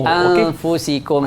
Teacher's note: Nun dengan mim dia kena dengung sikit.